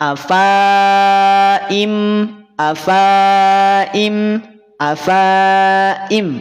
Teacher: langsung dari fa menuju Hamzah harakat kasrah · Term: dibaca pendek